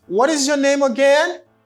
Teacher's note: this is the reason why i have a rising intonation because of again